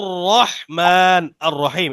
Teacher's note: রয়ের উপরে জবর বা পেশ থাকলে রটা মোট হয়।